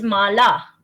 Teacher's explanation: it's the big ah it's not a small vowel it's a long vowel